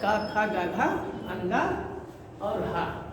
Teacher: इतने वर्णों का उच्चारण कंठ से होता है